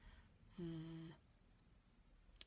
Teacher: Watch my mouth while I make the sound. My teeth sit on my bottom lip and I sort of blow the sound through my teeth.